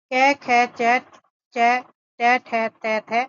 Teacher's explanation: जिस व्यंजन के उच्चारण में स्वर तंत्रिया झंकृत नहीं होती उन्हें अघोष व्यंजन कहते हैं।